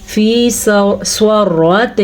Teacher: سواد کو پر پڑھنا ہے کیونکہ سواد حروف مستعلیہ میں سے ہے، اور را کو اس لیے پر پڑھنا ہے کیونکہ را کے اوپر زبر ہے.